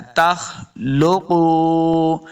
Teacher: तख खा हुरूफ मुस्तालिया से इसको मोटा पढ़ना है · काफ को हमेशा मोटा पढ़ना है, वाव मद्दा इसको दो हरकत लम्हा भी करेंगे